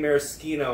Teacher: It's an Italian word, and in Italian, or mostly any romantic language, SCH is a sk sound. In English, which is a Germanic language, it's a sh sound.